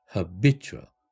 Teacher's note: 이때 habit 할 때는 액센트가 해에 오죠. 그런데 habitual, ual이라는 형용사형 어미를 붙이니까 액센트가 b에 왔어요. 두 번째 음절에 왔어요. 그렇게 되면 앞에 있는 해가 샷 사운드로 변해야 되겠죠.